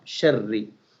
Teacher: ra of sharri is thin because of kasra under ra, because of zair under ra.